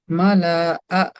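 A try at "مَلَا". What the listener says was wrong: মালা টান দিলেন কেন?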